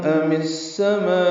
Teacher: خلقن ام اور السما ملا دیں گے، ام السما زیر کے ساتھ ادغام شمسی ہوگا، الف لام نہیں پڑھیں گے۔ ما میں مد متصل ہے، الف مدہ کے بعد حمزہ آنے کی وجہ سے وقف کریں گے تو حمزہ ساکن جھٹکے سے پڑھا جائے گا، تو یہ مد عارض سکون، مد وقفی، مد متصل اور ام السما وقف کر دیا، ملائیں گے تو حمزہ پر پیش معروف طریقے سے پڑھیں گے۔